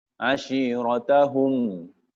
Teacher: Ada hum, ada bunyi gunnah dari hidung.